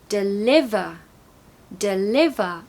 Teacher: part is going to be a schwa so lemon lemon deliver we've got a schwa sound in the first syllable because it's the second syllable that is loud not the first